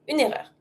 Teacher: Pronounce everything, and because it starts with a vowel, you can even connect it and say une erreur.